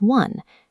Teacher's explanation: Take the exam phrase one-time payment and isolate that first spoken syllable. Deconstructing the pronunciation reveals a labiovelar approximant.